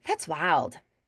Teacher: And the wild, it's a more muted D at the end sometimes as well.